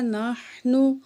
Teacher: ہا کو نکالیں گے، نون کو ہا سے ملائیں گے